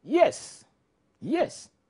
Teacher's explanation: in English when you say no no exactly this tool or when you say yes yes it's a falling tone